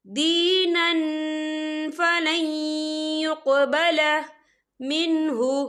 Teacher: یہاں دیکھیں دینن، نون کے پر تنوین ہے، تنوین کے بعد جو ہے فا آ رہا ہے، اور فا جو ہے اکفا کا ورڈ ہے، تو ہم یہاں اکفا کریں گے، تنوین کی آواز کو ناک میں چھپائیں گے